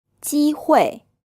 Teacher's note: the bit of the tongue behind the tip presses up against the top of your mouth at the front this gives the sound more of a softer less harsh sound